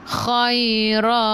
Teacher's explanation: Nak matikan dengan huruf ta, keluar sedikit sahaja angin. Okey, sebab sifat huruf ta hamas.